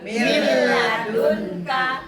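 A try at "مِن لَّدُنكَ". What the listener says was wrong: Langsung mil dimasukin dulu. Tapi jangan mil, jangan ditahan. Dia langsung aja masuk aja dia, jangan ditahan.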